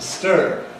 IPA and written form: stɝː (stir)